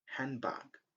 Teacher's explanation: we just pronounce very quickly and don't pronounce very clearly the sound d at the end of hand